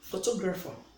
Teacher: if I say photographer where do we place this rest to place the stress on the second syllable